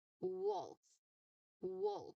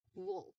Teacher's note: So you say the letter here really tightly, you know, because your your lips are tight. You focus on the tight lip rounding at the start of the word.